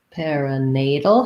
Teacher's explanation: perinatal has stress on the nay syllable again we have a tal here this is the flap t